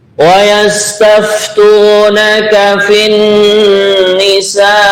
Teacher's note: nunnya tasdid kita dengungkan namanya adalah hunah